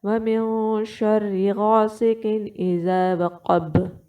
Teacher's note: اخفا کے وقت آپ نے 2 کام کرنے ہیں، ایک نون کی آواز کو چھپانا ہے اور دوسرا غنہ کرنا ہے، ٹھیک ہے۔ غین جو ہوگا وہ آپ نے حلق کے پہلے حصے سے نکالنا ہوگا، اور قاف جو ہوگا وہ آپ نے نرم تالو اور زبان کی جڑ کو ملا کر چھوڑیں گے تو یہ والا قاف ادا ہو جائے گا، اور با پر آپ نے قلقلہ کرنا ہوگا، ٹھیک ہے۔